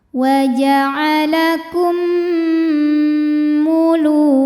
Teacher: Maka cara membacanya mim yang sukun dimasukkan ke mim kedua disertai bunyi dengung. Jadi bunyinya m ditahan. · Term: idgham mimi